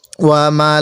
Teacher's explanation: ওয়ামালাইকাতিহি এই লামের মধ্যে টান দিব